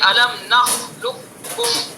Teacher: قاف جو بڑا قاف ہے اس کا ہم نے چھوٹے کاف میں ادغام کیا، تو بڑے قاف کو سائلنٹ کر دیں گے ، یہ ادغام تام ہو جائے گا، الم نخلقکم، بڑے قاف